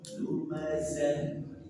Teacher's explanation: Betul-betul dari pangkal tenggorokan ha. Dan alirkan dengan sempurna.